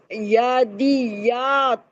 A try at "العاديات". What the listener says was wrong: عادیات عین.